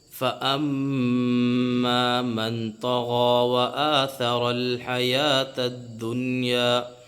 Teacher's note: غنہ ہو رہا ہے، کیونکہ میم کے اوپر تشدید ہے، میم کے اوپر تشدید آ گئی تو یہاں پہ میم مشدد ہوا، میم مشدد ہونے کی وجہ سے اس میں غنہ ہو رہا ہے